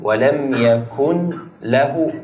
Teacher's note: إدغام كامل النون في اللام. ولم يكن كل مباشرة من ضمة الكاف إلى اللام. Masuk langsung ke lam, seperti itu hukumnya idgham bila gunnah. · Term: إدغام بلا غنة